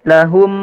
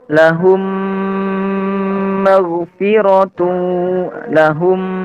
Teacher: Cara membacanya adalah memasukkan mim mati ke dalam huruf mim disertai dengan gunnah dan juga dipanjangkan. Dan di sini dikatup mulutnya. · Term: idgham mimi